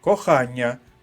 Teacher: ть пом'якшений і знаходиться між двома голосними и та а кохання звук нь подовжений пом'якшений знаходиться між голосними А та а